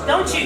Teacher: if T and Y get together they are fused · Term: assimilation